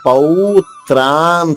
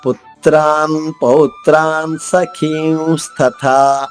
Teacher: త్రాన్ పౌత్రాన్ స ఈ 4 కూడా సంయుక్తాక్షరాలే. పు అనే అక్షరం పైన ఆఘాతం తీసుకుంటూ త్రాలోని మొదటి అక్షరం తా ద్విత్వం చేసుకుంటూ